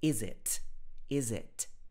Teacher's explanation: she says all the t's at the end of her words